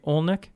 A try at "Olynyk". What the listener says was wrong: Close. You got the accent on the wrong syllable. It's Olynyk.